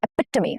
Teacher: Here the stress falls on the second syllable, which is epitome. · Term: stress syllable